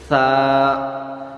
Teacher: تا کی آواز کو جب نکالیں گے تو ہونٹوں کو پھیلا کر پڑھیں گے، تا، اور قو کی آواز جب پڑھیں گے تو ہونٹوں کو ہلکا سا گول کر دیں گے، تو اس طرح سے ادا ہوتے ہیں۔ سا، سا کو نرمی سے ادا کیا جاتا ہے، اس میں سیٹی نہیں بجتی۔ سا، زبان کی نوک یا زبان کا سرا دونوں دانتوں کے بیچ میں لگا کر ادا کرنا ہے۔